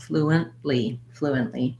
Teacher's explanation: because it's not fluent but flu and so there's a syllable break there flu and we use a stopped t